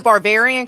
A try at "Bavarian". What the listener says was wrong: Bavarian. From the Bavaria. From the region of Germany. Well, and you also added a B. Well, you had like Conan the Barbarian. No, it's just Bavarian.